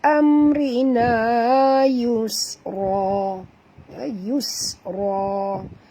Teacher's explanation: yus bunyikan safir pada sin, kerana sin itu mati.